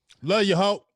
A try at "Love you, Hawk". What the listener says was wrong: It sound like you said love you, ho. You gotta pronounce the K, dog. Love you, Hawk.